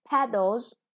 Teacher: The first syllable is stressed.